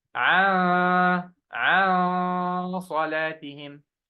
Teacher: Noon followed by sad. Yes, sad is a heavy letter. So I should do heavy ghunna here.